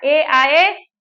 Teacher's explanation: तो कंठ तालव्य वर्ण जो हैं ए दैतो कंठ तालु, ए आए जो है हमारे कंठ तालु दोनों को स्पर्श करते हैं